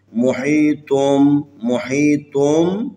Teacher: یہاں نون کی آواز کے بجائے میم کی آواز کے ساتھ اس کو پڑھنا ہے